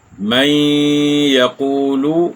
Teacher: اب ان کی مثالیں سمجھ لیجئے۔ من یقول، یہاں نون ساکن کے بعد یا ہے، تو یہاں ادغام مع الغنہ ہے، ایک الف یا 2 حرکات کی مقدار ہم نے اس کو لمبا کیا